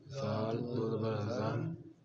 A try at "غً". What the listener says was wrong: اب زن اور غن اس میں فرق کرنا ہے. زا غا اس کو ایک طرح نہیں پڑھنا. غن